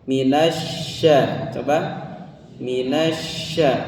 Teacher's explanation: Terkadang suka ada orang yang mengucapkan shin itu bibirnya nyingsat kalau hurufnya minasya itu enggak ya. Jadi shin itu tidak melibatkan dua bibir ya.